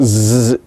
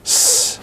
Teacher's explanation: It is like zayin, but there is no voicing. So it's not z, it's s.